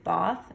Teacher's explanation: mainland educated speakers they um had a lengthened vowel in there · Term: bath trap split